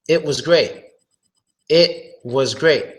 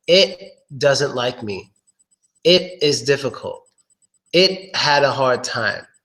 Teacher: We make the stop T sound, which is you stopping the T sound with your throat.